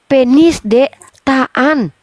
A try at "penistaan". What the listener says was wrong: Sambung Uni. Disambung. Ini penistaan bukan penis.